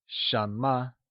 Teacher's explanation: Shama is pronounced in the mid rising tone